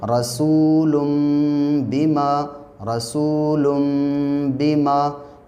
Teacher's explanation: तो 2 पेश की तनवीन इसलिए मीम से बदली क्योंकि वहाँ पे आगे क्या है, आगे बा है। इसी तरीके से यहाँ पे रसूलुम बिमा, रसूलुम बिमा। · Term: इक़लाब करना